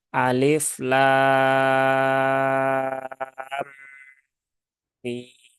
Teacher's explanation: Nah, kebanyakan membacanya kesalahannya itu adalah lam dan mimnya itu kurang dari 6 harokat. Padahal ini masuk dalam kategori mad lazim, maka dia dibaca panjang 6 harokat. Namun tidak hanya berhenti di situ, di sini di antara lam dengan mim, nah itu ada mim bertemu dengan mim.